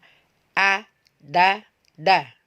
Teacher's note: ujung lidah kita tempatkan di dua gigi seri bagian atas Baik da ini sudah diberi harakat fathah ya a da da